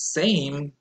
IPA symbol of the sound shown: ej